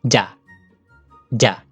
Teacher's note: Middle class, dead short, low tone.